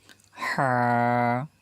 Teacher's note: হা যখন বলবো আমরা চাপ দিয়ে বলবো, একটু কণ্ঠনালীর মাঝখান থেকে হা উচ্চারিত হয়, হা চেপে বলবো আমরা।